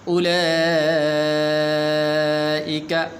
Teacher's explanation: اولئک بڑی مد ہے، 5 الف کے برابر کو لمبا کرتے ہیں